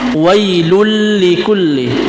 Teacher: kita memasukkan huruf yang bertasdid, yaitu huruf lam, tanpa diikuti dengan dengung, yaitu bisa disebut dengan idgham bila gunnah, tanpa diikuti dengan dengung.